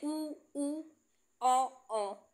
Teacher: वृत्त मुखी कौन से होते हैं? जिन स्वरों के उच्चारण में होठ गोलाकार अर्थात वृतमुखी होते हैं उन्हें वृत्त मुखी स्वर कहते हैं।